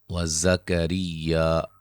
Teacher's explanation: زا کو سیٹی سے، را کو باریک